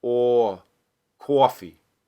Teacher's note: for a New Yorker a word like coffee that will tend to get some rounding when it's very stressed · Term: strong form